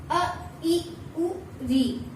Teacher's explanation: इन्हें बोलने में कम से कम समय लगता है। बहुत ही कम समय में हम इसका उच्चारण कर लेते हैं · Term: ह्रस्व स्वर